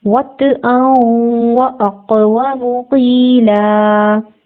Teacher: واو مشدد ہے، واو مشدد سے پہلے زبر تنوین ہے، یہاں پر غنہ کریں گے. قاف ہیوی لیٹر ہے پلس قاف ساکن ہے تو اس پر قلقلہ ہوگا، آواز مخرج سے ٹکرا کر واپس آئے گی.